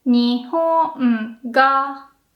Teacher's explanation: nakadaka, you make the mountain inside the word, and the particle is also low because, again, it can't go up.